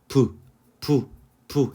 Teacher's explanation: 부 해갖고 입이 터지죠. 입이 이렇게 터져서 벌어지게 됩니다. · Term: 파열음